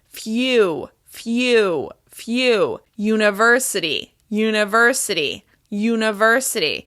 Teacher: my mouth is starting in the y shape, moving to the oo sound, and ending with the w shape